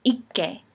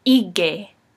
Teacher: But when you shorten it, when there's just one k and it's in between two vowels, it actually becomes voiced, so it sounds like a g